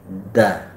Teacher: Kalau da itu huruf di ujung langit-langit dan pangkal gigi.